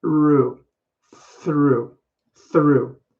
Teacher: so through my tongue actually goes between my teeth in the front like this but i don't use my voice here i actually am just using my teeth and tongue to get